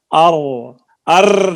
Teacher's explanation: راہ ایک ہی ہے لیکن اس میں زبان میں کپاہٹ ہے اور تکرار کی مشابہت ہے۔ اس کو ایک تقریر بھی کہتے ہیں، یعنی تقریر اس میں تصغیر پائی جاتی ہے۔ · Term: مشابہت تکرار